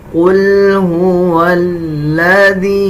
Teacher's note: یا کے اوپر چھوٹا مد ہے، 3 سیکنڈ لمبا کریں گے